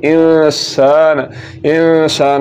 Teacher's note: زبر کے بعد الف کے ا جانے کی وجہ سے سین کے اوپر زبر کو لمبا کریں گے